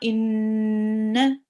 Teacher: It's a noon mushaddad. Make sure to sit on it and do the ghunna.